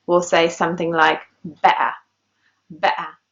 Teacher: You can hear there is a little gap, a little pause in the middle of the word when the air in your throat is blocked. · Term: glottal stop